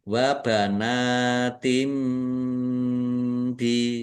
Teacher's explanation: Kasroh tanwin bertemu dengan huruf ba bacaan iklab dibaca membalik dibaca mim baknya di bi wa banatim bi ya.